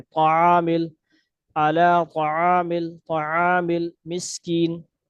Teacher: کوشش کرنی ہے، ولا یحض علی طعام، طعامل پڑھ جاتے ہیں، طا کو موٹا کرنے کے چکر میں پیش بنا دیتے ہیں، یہاں پہ پیش نہیں ہے، زبر ہے